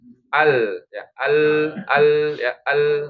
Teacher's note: Yang tadinya kalau lam itu di sisi lidah bergeser menjadi ke ujung lidah, bergeser ke huruf nun ya. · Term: inhiraf